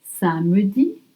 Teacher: Because in French, we call it ellipse. We often drop the E when E is between two consonants.